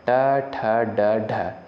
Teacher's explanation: ट वर्ग का जो उच्चारण स्थान होगा मूर्धा